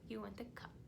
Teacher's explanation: we don't want to put the extra schwa sound on the end